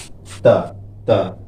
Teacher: यानी दांत के, जैसे आप बोल रहे हैं अभी ता ता, तो जीभ जो होती है दांत में सटती है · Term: दंत वर्ण